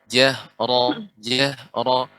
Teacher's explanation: Karena nanti ketika mengucap, di antara cara mengucap ro, yaitu getarannya sedikit. Dan ro yang berharakat fathah tebal